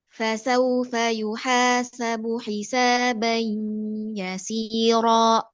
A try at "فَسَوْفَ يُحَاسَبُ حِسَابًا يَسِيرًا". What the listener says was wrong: Ya, si, ro. Tambah ro seperti panjangnya si. Fasaufa yuhasabu.